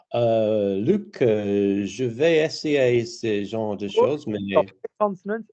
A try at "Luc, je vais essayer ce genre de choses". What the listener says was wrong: Soften the consonants and travel more on the vowels.